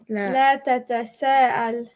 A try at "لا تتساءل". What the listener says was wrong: Good job.